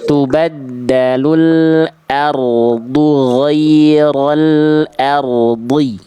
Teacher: ro itu memang tidak boleh getarannya berlebihan [mendengus] tapi juga tidak boleh getarannya ada nuansa-nuansa Eropa di sana ya.